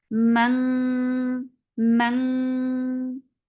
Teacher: How? Because your tongue is lifting up and blocking your throat.